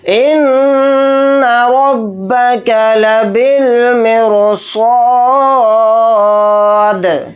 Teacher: فَصَبَّ عَلَيْهِمْ رَبُّكَ سَوْطَ عَذَابٍ إِنَّ رَبَّكَ لَبِالْمِرْصَادِ، حمزہ کو نون میں ملا دیں گے، نون کو اوپر تشدید ہے تو نون میں غنہ کر کے پڑھیں گے، غنہ اس طرح سے کریں گے، ان را کو با میں ملا کر پڑھیں گے، را کے اوپر زبر ہے تو را کو یعنی موٹا پر پڑھیں گے اس کو، با کو جلدی پڑھیں گے، کاف کو جلدی پڑھیں گے، لام کو جلدی پڑھیں گے، با کو لام ساکن کے ساتھ ملا کر پڑھیں گے، یہ الف نہیں پڑھا جائے گا۔